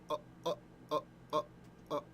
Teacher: aleph was just kind of like a stop in your throat, like that was an aleph.